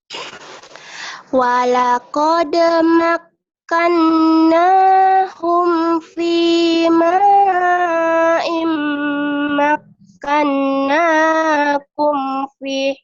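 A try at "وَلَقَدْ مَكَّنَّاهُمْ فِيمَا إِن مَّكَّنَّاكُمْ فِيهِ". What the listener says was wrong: Pih panjang. Pih panjang ya. Kan ada disukun jadi. Walaqad makkannahum fi ma'im makkannakum fi.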